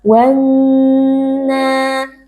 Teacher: huruf nun dibaca dengan gunnah mutawwalah atau gunnah yang dipanjangkan